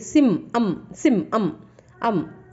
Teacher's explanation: ಈ ಅಮ್ಮನ್ನು ಅನ್ ಅಥವಾ ಅಮ್ ಅಂತ ಪ್ರೊನೌನ್ಸ್ ಮಾಡ್ಬೋದು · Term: ಅನುಸ್ವಾರ